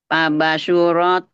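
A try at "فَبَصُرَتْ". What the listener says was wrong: tidak boleh banyak panjang. Tadi yang awal panjang. Sama ini juga.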